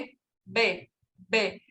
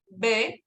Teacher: cuando emitimos el sonido producimos el sonido de ve se siente la vibración de las cuerdas vocales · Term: fonema sonoro